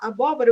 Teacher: Aqui em abóbora, se você falar abóbora, você vai perceber que a sílaba tônica, que é a sílaba mais forte, ela é a segunda ali